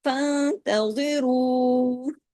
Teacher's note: فانتظروا نون پہ تشدید ہے ڈبل نون ہے نون پہ غنہ ہوگا